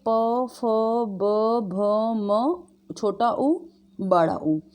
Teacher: जैसे बोल के देखिए आप, तो जब हम ओष्ठ, मतलब यही होता है, ओष्ठ नाम ध्वनि इसलिए रखा गया है क्योंकि दोनों होठ इसमें मिलते हैं, है ना, दोनों होठों को मिलाने पर ये शब्द, ये व्यंजन बोले जाते हैं